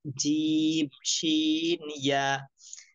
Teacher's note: 6 নম্বর মাখরাজ জিহ্বার মধ্যখান তার বরাবর উপরে তালুর সঙ্গে লাগাইয়া